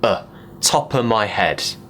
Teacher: head sometimes it will even become a top of my head the of is not important the important words are top and head mainly